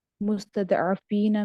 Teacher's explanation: और फिर मुस्तदअफीन में दौद हरूफ मुस्तालिया में से, इसको भी पुर करके पढ़ेंगे